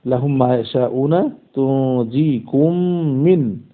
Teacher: প্রথম মিমকে দ্বিতীয় মিমের মধ্যে ইদগাম করে দিব গুন্না সহ। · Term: ইদগামে শাফাউই